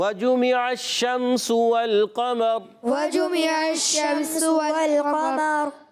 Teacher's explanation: واو کی ادائیگی ہونٹوں کی گولائی سے، اور واو کا مخرج بھی ہونٹوں کی گولائی ہے